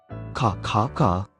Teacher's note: 혀뿌리가 목구멍을 막으면서 나는 소리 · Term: 기억 소리, 기역 소리